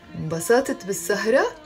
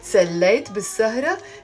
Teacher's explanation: you have to change the intonation in your voice and make it a question